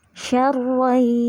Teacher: Jadi nun mati dan tanwinnya tidak dibaca, langsung melebur ke huruf idghamnya. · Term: idgham bi gunnah